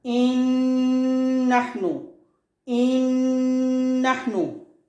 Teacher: This Noon merge into the second Noon.